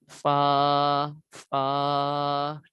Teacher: اوپر کے دانتوں کا کنارہ یہ تھا، اوپر کے دانتوں کے کنارے اور ہونٹوں کے تر حصے سے